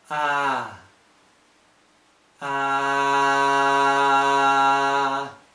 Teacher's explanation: the surface of the tongue is gradually coming down in the front of the mouth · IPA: æ